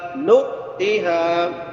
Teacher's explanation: نون کے بعد حمزہ ہے، جھٹکا دینا ہے یہاں پہ، نؤتیہا نہیں پڑھنا، نؤتیہا۔